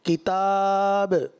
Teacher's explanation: اب چونکہ آپ تدویر میں پڑھ رہے ہیں تو کم سے کم 2 الف کھینچیں، اور ترتیل میں تھوڑا سا یہ کہ زیادہ ہوتا ہے جیسے 3 الف تک، تو تدویر پڑھ رہے ہیں تو کم سے کم 2 الف ضرور کھینچنا چاہیے. اور دوسرا قلقلہ جو ہے اس طرح ادا کرنا ہے کہ آواز لوٹتی ہوئی محسوس ہو